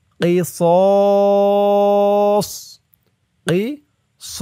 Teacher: স জবরের পরে খালি আলিফ এক আলিফ টানটা তিন আলিফ টান হয়ে যাবে স বলে তিন আলিফ টান দিয়ে এই সদকে ধরতে হবে সদের